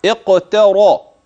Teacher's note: الراء التي في قوله اقتر انها مفخمه لانها مفتوحه اذ انها وقعت في وسط الكلمه